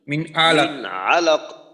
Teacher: আচ্ছা এইখানে যেটা একটু সমস্যা, যে মনে করেন আলাক, লামের উচ্চারণটা একটু লম্বা হইল, তো লম্বা কিন্তু করা যাবে না।